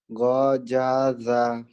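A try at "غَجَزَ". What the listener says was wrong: Gojaza. Rapuh yang ini ya. Goja keras. Ini rapuh. Gojaza.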